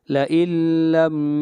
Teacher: نون ساکن کے بعد لام آ رہا ہے، ادغام کریں گے لیکن بلا غنہ